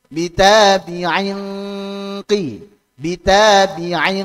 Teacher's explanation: maka kaidahnya gunahnya ngikuti ketebalan Q kasrah tersebut